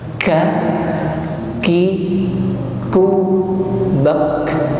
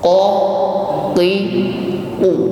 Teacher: Sedangkan huruf kaf di sini makhrajnya sama, cuma sedikit lebih ke depan dari makhraj qaf.